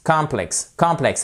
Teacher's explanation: Vous voyez ici, vous avez votre apostrophe qui signifie que sur la seconde syllabe, vous avez le stress, l'accent tonique. Donc, c'est là où on appuie pour bien prononcer en anglais.